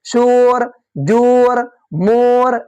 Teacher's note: واو مجہول, جس سے پہلے پیش ہو لیکن کھینچ کر نہیں پڑھے